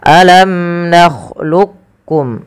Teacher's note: Yang pertama dengan idgham kamil ya. Memasukkan langsung huruf qof kepada huruf kafnya secara utuh.